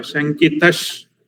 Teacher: शङ्कितः च शङ्कितश्च. So it's actually a sandhi. The visarga is converted into shakara.